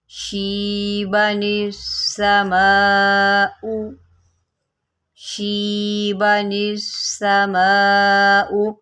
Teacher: نون کے نیچے زیر ہے نا، ہم اس کو سین کے ساتھ ملائیں گے